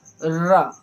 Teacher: रा कई बार हमारी जिह्वा ऐसे कंपन करके हमारी तालू से लड़ती है। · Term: लुंठित व्यंजन